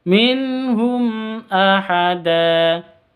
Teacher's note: Jelas bacanya. Mim matinya jelas, hamzahnya juga jelas, tidak boleh didengungkan. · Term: izhar safawi